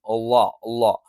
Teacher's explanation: അളാ എന്നുള്ള ഉച്ചാരണം ഉച്ചരിക്കാറുണ്ട് അളാ എന്ന് പറഞ്ഞാൽ എവിടെയാണ് നാവിൻറെ തല അല്ലെങ്കിൽ നാവിന്റെ തല ഒന്ന് പരത്തി വെച്ചിട്ട് നമ്മൾ എന്ത് ചെയ്യും മേലെ മുൻപല്ലിന്റെ താഴ്ഭാഗത്ത് വെക്കും